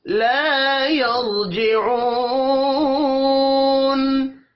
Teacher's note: لا الف مدہ ہے، ایک الف کے برابر کھینچ کر پڑھیں گے